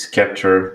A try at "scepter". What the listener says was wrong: is the C is silent in scepter. It's just scepter, not scepter. Just so you know.